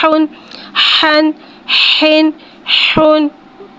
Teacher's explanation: हा को एक अलिफ यानी 2 हरकत के बराबर खींच के पढ़ेंगे। हा में हवा को ज़ाहिर करके पढ़ेंगे। हा के ऊपर 2 पेश है, 2 पेश को होठों की गुलाई के साथ अदा करके पढ़ेंगे।